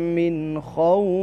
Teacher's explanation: نون ساکنہ یا تنوین کو بغیر غنہ کے ظاہر کر کے پڑھنا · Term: اظہار